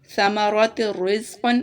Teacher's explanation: تا کی آواز کو را کے ساتھ ملائیں گے لیکن غنہ نہیں کریں گے ، جیسا کہ اسے ایسے پڑھیں گے، ثمرات الرزق، لمبا نہیں